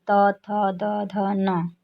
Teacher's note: थ दंत व्यंजन है, जिनका उच्चारण स्थान दंत है अथवा जिनके उच्चारण में जीवा दांतों में लगती है